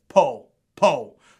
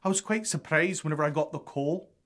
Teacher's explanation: It's as though the L sound is replaced with an elongated vowel or even a soft W sound. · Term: dropped L